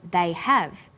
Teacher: Because stressed the auxiliary verb have, the H sound is pronounced.